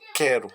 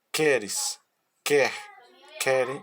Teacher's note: A força da voz está no início do verbo. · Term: Verbos risotônicos